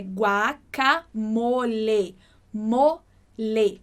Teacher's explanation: El guacamole. Ou seja, essas vogais do espanhol, o A, o E, o I, o O e o U, principalmente o E e o O, eles sempre vão ter esse som fechadinho. Então, igual no português, né, que a gente fala guacamole e a gente troca o E do final por I, em espanhol isso não acontece.